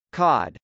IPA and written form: kˈɑd (cod)